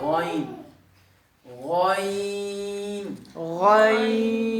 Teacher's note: اگلا جو حرف ہے وہ خا سے ملتا جلتا ہے. اس کا جو مخرج ہے وہ ادنی حلق ہے، یعنی وسط حلق سے تھوڑا نیچے سینے کی جانب